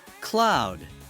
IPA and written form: klaʊd (cloud)